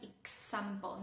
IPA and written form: ɪksæmpəl (example)